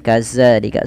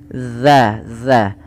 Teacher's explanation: Ujung lidah nempel dengan gigi dari atas, za, dan dia dipanjangkan 2 harakat.